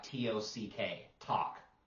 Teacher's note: they won't say the L they'll make it sound like to c k talk can you